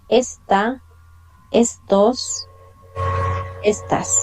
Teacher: we have more the stress on the first vowel, that is E